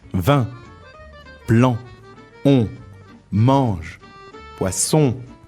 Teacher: all those vowels are followed by an N, and the N is said in your nose instead of in your mouth, like you have a cold or something. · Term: nasal vowels